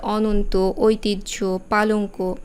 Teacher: এই যুক্ত ব্যঞ্জনের সাথে যে অ আছে সেটি সবসময়ই সংবৃত হবে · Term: সংবৃত উচ্চারণ